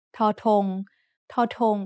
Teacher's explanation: torton makes an aspirated t sound like a t in tennis